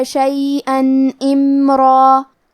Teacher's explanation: کلمت امرا کی شروعات میں الف کے نیچے زیر ہے تو ہمیں زیر کو ظاہر کرنا ہے اور میم ساکن کو بھی ظاہر کریں گے